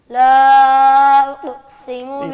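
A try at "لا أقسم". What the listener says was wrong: قاف کو بھی درست کیجئے. قاف ادا کرنے کے بعد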